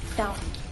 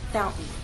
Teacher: When I say the word fountain, I'm using a glottal stop.